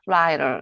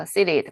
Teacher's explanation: T는 강세가 있는 모음 뒤에, 강세가 없는 모음 앞에 일 때는 르로 발음이 된대요. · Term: 플랫 사운드